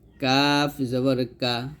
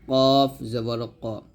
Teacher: কাফটা পাতলা হবে কফটা মোটা হবে